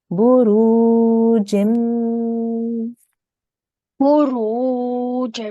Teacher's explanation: Now this jim, we're going to join to the mim mushaddad. but we're going to make a 2-second nasal sound.